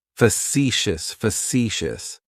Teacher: That first syllable has that schwa, that sound.